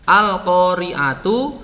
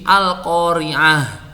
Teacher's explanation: Wakafnya disukun, tak marbutohnya menjadi hak.